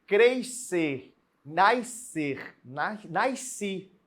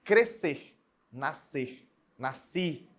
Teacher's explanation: lembre-se correto é não pronunciar esse SC tem que sair um só som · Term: dígrafo